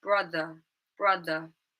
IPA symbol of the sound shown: ə